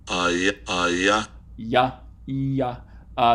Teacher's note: are gonna be high vowels but it's front and unrounded and since it's high and front and not rounded it qualifies as a palatal Glide